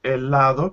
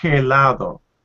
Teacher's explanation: But the H in Spanish is completely mute.